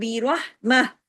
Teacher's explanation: بی رحمت اگر رکیں گے تو بی رحمہ تا 2 زیر 3 کی تنوین کو روک دیں گے تا کو ہاں میں بدل دیں گے را کو ہیوی کر دیں گے رحمہ. اگر رکیں گے تو بی رحمہ تا جو ہے نا تا گول تا جو ہوتا ہے یہ اگر رکتے ہیں تو ہاں میں بدل جاتا ہے لیکن اگر ملا کے پڑھیں گے ادغام ہوگا.